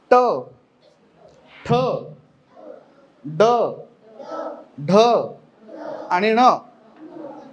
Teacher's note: ही अक्षर उच्चारताना आपली जीभ टाळ्याला लागते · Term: स्पर्श व्यंजन